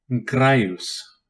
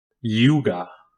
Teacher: It is a palatal glide, pronounced like the Y in yes.